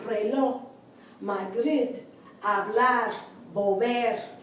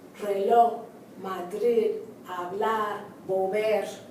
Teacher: I don't know if you can hear it, but the accent is on the last syllable.